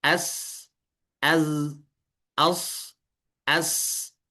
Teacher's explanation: Karena dia tekanan udara keluar daripada rongga yang kecil sehingga dia menyebabkan gesekan dan menimbulkan suara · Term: asofir